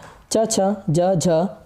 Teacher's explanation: च, छ, ज, झ जो है तालव्य व्यंजन है